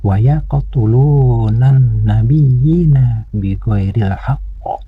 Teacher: Pada bacaan ini ada huruf qaf sukun. Huruf qaf sukun ini harus dibaca qalqalah, yaitu qalqalah sugro. Artinya qalqalah kecil, karena disukunkannya huruf qaf ini berada di tengah bacaan.